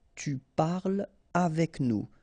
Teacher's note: So no liaison here between parle and avec